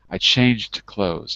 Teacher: I would put the j-d on clothes.